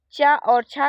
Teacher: चा और छा का उच्चारण स्थान तालु है